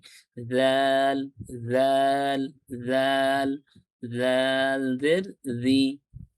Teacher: আমি জালের উচ্চারণটা অনেকটা পাতলা করে পড়ছি। জাল, জাল, জাল, জাল জের জি।